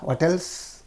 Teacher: as an afterthought you have to use the rising intonation on that